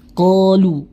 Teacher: Kemudian qalu tadi huruf qaf memiliki sifat isti'la, kemudian ditambah dengan harokat atau mat alif, mohon maaf ada alif setelahnya, maka tingkat ketebalannya naik